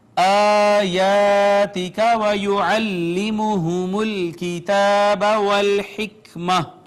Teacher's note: جہاں بھی یہ گول تا ہوتی ہے آخر میں، اس کو ہا سے بدل دیتے ہیں.